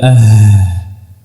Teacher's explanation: Adapun huruf ha dengan mendekatkan saja tanpa merapatkannya kemudian mengeluarkan udara dari dari dada